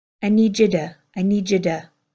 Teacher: the strong t in two, becoming this softer held back d